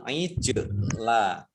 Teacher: Jim sukun, bacaan kolkolah memantul